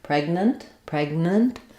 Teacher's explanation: with a little I or a short little uh sound between your two n sounds · lifting the back of my tongue for that g sound and then I just release right into the N of the next syllable